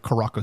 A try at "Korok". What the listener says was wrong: How did you pronounce that? I thought I heard you say Koroko.